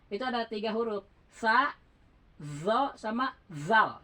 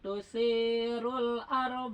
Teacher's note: Ya, itu harus ketemu dulu ujung gigi atas dengan ee ujung lidah itu. Setelah itu baru diucapkan di situ mahrajnya gitu. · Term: tsa